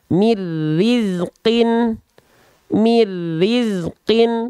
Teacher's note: tanpa disertai dengung ah maka kita baca mirizqin mirizqin Nah jadi Nun sukunnya lebur dia ke huruf ro · cara bacanya tanpa ditahan tanpa disertai dengung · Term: idgam bilagunah